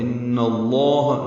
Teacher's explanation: ان میں نون مشدد پہ غنہ ہے، لام اس میں جلالہ پر ہے.